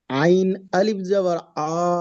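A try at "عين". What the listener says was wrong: অক্ষরের টানটা খেয়াল করেন অক্ষের টান একদম হচ্ছে না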